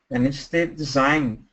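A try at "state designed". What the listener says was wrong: Remember, the second D needs to be a little stronger, and instead designed the Electoral College.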